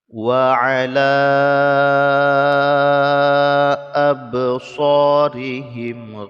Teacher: ba sukun dibaca Qalqalah tapi Qalqalah Sugra karena tidak kita wakafkan